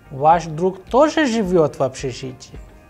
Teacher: Again question. So, the pattern of the sound is going higher at the end